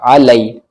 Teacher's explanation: یا ساکن سے پہلے لام کے اوپر زبر ہے، یا لین ہوگا، نرم آواز کے ساتھ جلدی پڑھا جائے گا